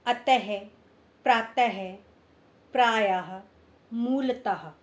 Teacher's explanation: इसमें ह की साउंड या आवाज आती है अ का उच्चारण करने पर